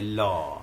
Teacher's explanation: लेकिन इसमें पार्श्विक है, हवा जीभ के बगल से निकल जाते, ल है ना, हवा जीभ के बगल से निकल जाती है